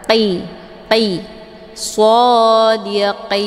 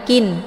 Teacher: Dia qin, ini qin, qaf, tempat keluarnya dari pangkal lidah, ya. Jadi pangkal lidahnya ditempelkan ke langit yang lunak dekat dengan anak teka